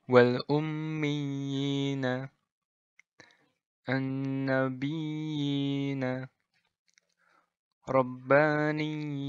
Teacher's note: Nah, jadi pas yina itu 2 harokat. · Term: mad tamkin